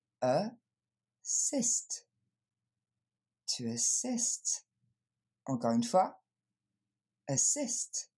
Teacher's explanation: L'accent tonique tombe sur la deuxième syllabe. Assist. Le premier son, ça n'est pas un A, c'est le son E qu'on va entendre.